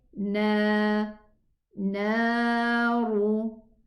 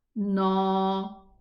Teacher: This noon is not elevated, it's a lowered letter. So don't say na, because when I say na, it's an elevated pronunciation.